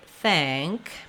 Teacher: the NG makes that ah vowel more nasalized, and it does raise it up a little bit. So you might notice when I say thank, my mouth doesn't open quite as much as when I say that.